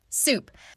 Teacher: In soup, your lips stay rounded the whole time.